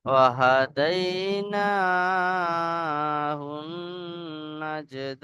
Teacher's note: আচ্ছা, জিমের উপরে সাকিন কলকলার পর একালিফ কলকলা করে 11 অক্ষরের সাথে মিলিয়ে পড়তে হবে। আর এখানে মাদ্দা আরিসে ওয়াকফির মতো 3 থেকে 4 আলিফ পরিমাণ টান দিয়ে থামতে হবে।